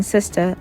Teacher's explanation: the l and r are also seen as problematic in aave they become an a sound when seen at the end of words